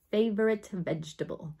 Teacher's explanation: The only difference is that F does not have the vocal component. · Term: labial fricative